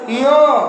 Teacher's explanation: ञ में तालु भी है और नासिका भी है।